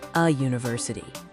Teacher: the U makes a long U sound, which is a consonant sound.